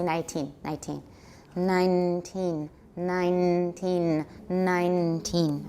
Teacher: so there's probably going to be no let-up in the nasalization the whole word from start to finish including all the both vowels are probably going to be heavily nasalized